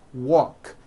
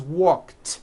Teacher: The word walk, which has an unvoiced k sound at the end.